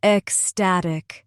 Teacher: Three syllables. Estatic. Stress in the middle.